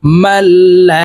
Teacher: এই মিম তাসদিদ ওয়ালা লামকে ধরবে মাঝখানে জজম ওয়ালা নুন বাদ পড়ে যাবে